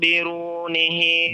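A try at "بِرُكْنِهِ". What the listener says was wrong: Biruk. Biruknihi, huruf kaf ya. Itu.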